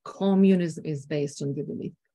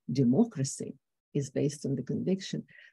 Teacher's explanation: communism is pronounced within a lower range and a lower level and narrow range